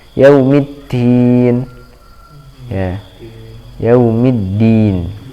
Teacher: Yaumi bukan middin, yaumiddin, maliki yaumiddin. Huruf dal perhatikan ada tasydidnya, ditahan sedikit, yaumiddin. Kemudian ketika dilepaskan ya ujung lidahnya jangan sampai ada udara yang berhembus.